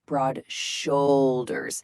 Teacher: Really emphasize that first syllable of the second word, broad shoulders.